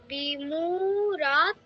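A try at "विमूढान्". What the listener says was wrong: রা নয়, রা নয়, এটা ওই সংস্কৃতে ওই অক্ষরটা নেই, ঠিক আছে? যেখানে এই অক্ষরটা পাবে সেখানে ঢ বলতে হবে, ঢাকের ঢ, ঢা, ঠিক আছে? তাহলে বিমু, তারপর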